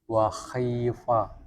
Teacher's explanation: Terlalu menebalkan kha ketika berharokat kasrah.